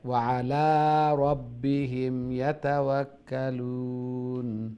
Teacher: ওয়া আলা লাম ওইটা লং হবে আইন নাই